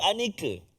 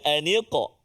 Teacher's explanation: huruf qaf kat situ sukun. Maka kita kena beri qalqalah dia, jangan tertukar dengan kaf.